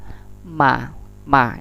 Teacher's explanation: Ma ini syafawi, huruf bibir. Sama seperti huruf ba, pertemuan bibir atas dan bibir bawah.